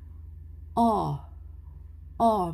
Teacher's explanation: medyo o pero hindi bilog